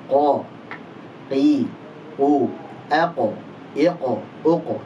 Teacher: Qaf adalah pangkal lidah menempel dengan langit-langit atas bagian daging yang lunak. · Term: huruf qaf